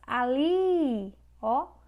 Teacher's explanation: Li é a última sílaba, ou seja, essa palavra é oxítona.